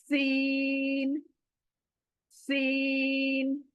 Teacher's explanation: सीन, very soft. और सीटी आनी है, दोनों दांत हमारे लगने हैं, और जबान पीछे से सीन बोलेगी। जबान दोनों दांतों को टच करके सीन बोलेगी। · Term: सीटी वाली आवाज